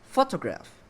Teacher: Nah, dalam kata photograph ini yang di stress itu adalah di awal kata atau kalimat. Jadi syllable pertama lah yang harus di stress.